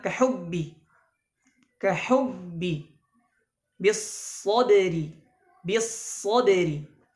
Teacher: penjelasan syiddah di sini adalah itu menahan suara ketika mengucapkan huruf ba dan Jim